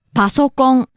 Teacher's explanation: So, kind of rising and then leveling off. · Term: pitch accent